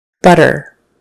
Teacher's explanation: This next one has a middle T, where it's just kind of a soft, somewhere in between T and D sound